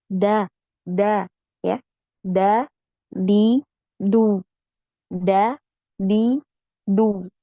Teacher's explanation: untuk huruf Dal ini tidak ada aliran nafasnya jadi ketika mengucapkan huruf Dal ini bisa dibuktikan dengan Letakkan tangan